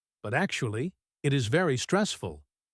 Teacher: actually is stressed to contrast with public opinion.